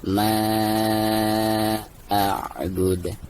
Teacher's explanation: Maka dihukumi mad jaiz munfasil dan dibaca 2 harkat atau bisa dibaca 5 harkat.